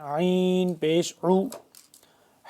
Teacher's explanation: عین کو ہم نے کھینچ کے گلے سے نکالنا ہے